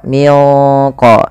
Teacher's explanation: Caranya nunnya samarkan ke qo minqo ya. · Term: ikhfa ab'ad